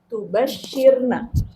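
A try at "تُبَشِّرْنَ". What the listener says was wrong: Pakai tasydid ya.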